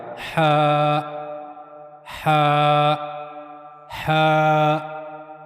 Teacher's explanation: ہا کو ادا کرنے کے لیے گلے کے درمیانی حصے کا استعمال کیا جائے گا،